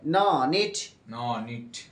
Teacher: তালুতে স্পর্শ করে তালুতে স্পর্শ করে নাক দিয়ে বাতাস বের করে নাক দিয়ে বাতাস বের করে উচ্চারিত হয়।